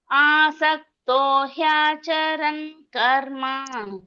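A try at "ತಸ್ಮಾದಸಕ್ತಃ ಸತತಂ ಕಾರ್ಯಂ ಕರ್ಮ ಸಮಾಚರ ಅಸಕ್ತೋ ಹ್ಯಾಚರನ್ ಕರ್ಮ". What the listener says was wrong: ಆಸಕ್ತ ಬರಲ್ಲ ತಸ್ಮಸಕ್ತ ತಸ್ಮತ್ ಅಸಕ್ತ ಆಮೇಲೆ ಇಲ್ಲೂ ಅಷ್ಟೇ ಮೂರನೇದರಲ್ಲೂ ಅಸಕ್ತ ಅಂತನ ಬರ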